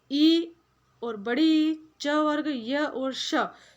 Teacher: ये ऐसे वर्ण हैं जिनका उच्चारण करने के लिए हमें तालु का उपयोग करना रहता है, इसलिए इनको तालव्य कहा गया है।